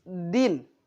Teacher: makharijul huruf da tersebut dengan menyentuhkan ujung lidah ke pangkal gigi seri atas. Din, bukan menyentuh langit-langit tapi menyentuh daripada pangkal gigi seri atas.